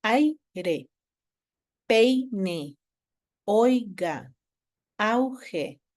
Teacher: en aire hay dos sílabas y las vocales quedan en una sola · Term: diptongo